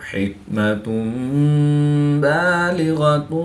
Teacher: دو پیش کی تنوین کے بعد حرف با ہے تو دو پیش کی تنوین کو میم سے بدل کر غنہ زمانی کر کے پڑھیں گے۔